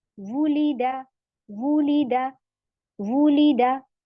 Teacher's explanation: वाव पेश वू, आपके होंठ गोल हो गए, वूलीदा, वूलीदा, वूलीदा। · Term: गैर मद